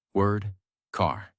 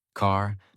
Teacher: In American English, the R sound is strong and clear. It is not silent, it is not weak, it is fully pronounced. Your tongue moves slightly back, your mouth stays relaxed, and the sound comes from inside, not from the lips. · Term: American R sound